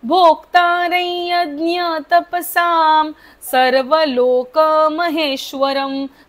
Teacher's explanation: साच्या वरचा अनुस्वाराचा उच्चार मच होईल कारण पुढे स आहे.